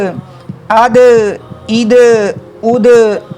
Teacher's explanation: اب دال کی آواز میں ہم لوگوں نے جنبش پیدا کی ہے، حرکت پیدا کی ہے، اس لیے کہ دال میں قلقلہ ہو رہا ہے